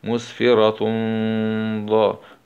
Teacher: تاء ضمتين مع الإخفاء الحقيقي